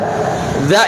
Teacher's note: huruf yang diikatkan maka kita kasih contoh Zak dimana makrifatnya itu ujung lidah bertemu dengan ujung gigi seri atas ya kan perhatikan Za itu ujung lidah bertemu dengan ujung gigi